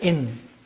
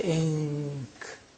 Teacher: Al-ikhfa means pronouncing the noon not from the point of articulation of noon, which is behind the upper teeth, but from the point of articulation of the next letter